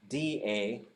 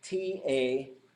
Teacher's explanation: the d sound and the t sound are actually the same sound what happens is your vocal cords turn on